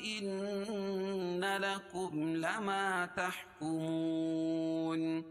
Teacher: ان نون مشدد اس میں غنہ ہوگا